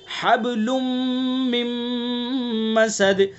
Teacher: لام کے اوپر دو پیش کی تنوین ہے اور تنوین کے بعد میم ہے، تو اس کے اندر غنہ کریں گے. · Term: ادغام ناقص